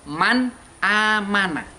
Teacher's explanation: Karena nun sukun tersebut harus dibaca jelas. Suara N-nya itu jelas. Tidak NG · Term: idhar